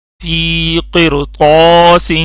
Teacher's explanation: را پہ جزم ہے، اس سے پہلے زیر آ گئی ہے، لیکن اس کے بعد حروف مستعلیہ میں سے ایک لفظ آ گیا ہے، تو اس لیے یہ را بھی موٹی ہوگی